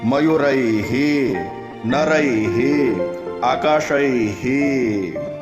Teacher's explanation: સ્વર ઐ છે પરંતુ વિસર્ગનું ઉચ્ચારણ થશે હી